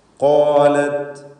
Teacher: ഖാലത് ഖാഫിനും അലിഫിനും തഫ്ഖീം കൊടുക്കുക.